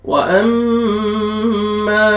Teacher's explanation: मीम मुशद्दद है, अलिफ से पहले ज़बर, मीम को आपने खींचना है